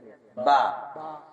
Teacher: با ادا کرتے وقت دونوں ہونٹ آپس میں تری میں لگیں گے